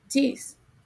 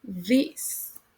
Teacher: It is articulated more interdentally in American English, like for example, this.